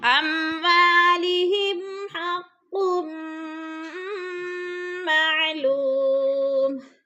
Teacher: معلوم پہ واو مدہ ہے، واو ساکن سے پہلے لام کے اوپر پیش ہے تو واو مدہ کو بھی تھوڑا سا ہم نے کھینچ کر پڑھنا ہے